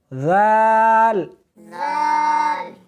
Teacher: زال نہیں، سختی نہیں کرنی بلکہ نرمی کے ساتھ پڑھنا ہے۔